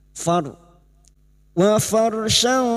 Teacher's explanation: Latau wa farshan, far ra sukun yang dibaca tafkim karena didahului fathah